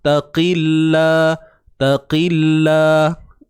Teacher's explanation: Lam ini nipis kerana qaf tu baris bawah.